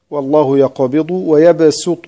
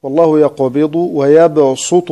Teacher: يجوز فيها السين ويجوز فيها الصاد، والله يقبض ويبسط بالصاد أو والله يقبض ويبسط بالسين.